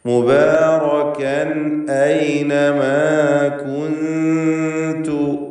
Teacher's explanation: മുബാറകൻ കൻ മുബാറകൻ. തൻവീനിനെ ഇൽഹാർ ഹൽക്കി നൽകി മണിക്കാതെ വെളിവാക്കുകയാണ് വേണ്ടത്, ശേഷം ഹംസ വന്നതുകൊണ്ട്